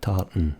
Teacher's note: Again, first T, tart, it's fine. Second T, tartan, it's gone.